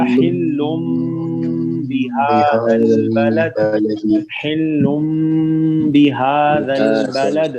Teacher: ہاں جی، اب یہاں دیکھیے یہاں پہ تنوین آئی ہے لام کے اوپر، حلن نون کی ساؤنڈ ہے، لیکن چونکہ بعد میں با ہے تو نون کی ساؤنڈ کو میم میں بدل دیا جائے گا، تو پڑھا جائے گا حلم بہذا البلد، حلم بہذا البلد.